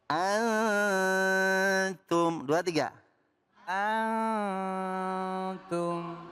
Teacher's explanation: Suara nun sukunnya nyaris kepada huruf ta. · Ikhfa samar dengan mendengung, akrob dekat. Nunnya dekatkan kepada ta. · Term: Ikhfa hakiki, ikhfa akrob